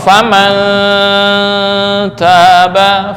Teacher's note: cara membacanya samar lebih besar daripada dengung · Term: ikhfa akrab